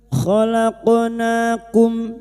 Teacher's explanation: qaf sukun yang mati asli di tengah kalimat qalqalah sugro